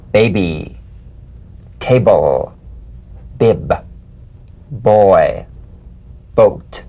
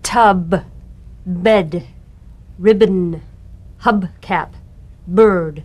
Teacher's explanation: Play this on the springing away from contact, not by pressing the lips together. You'll feel a gentle voiced pulsation on the lips like a delicate, crisp tap. · Voiced, labial stop or plosive consonant. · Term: drumbeat B